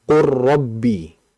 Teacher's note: Makanya huruf yang kedua yaitu huruf ro-nya dalam mushaf Madinah khususnya itu pasti ada tasydidnya, yang menandakan bahwa kita memasukkan ke huruf yang kedua itu secara sempurna. Sehingga suara lam tidak ada, hilang. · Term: idgham